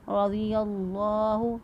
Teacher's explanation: را کو بھی پر پڑھا کیونکہ را کے اوپر زبر ہے